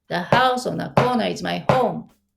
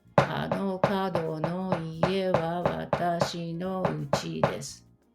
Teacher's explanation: Each syllable is equally stressed and equally lengthened. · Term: metronomic rhythm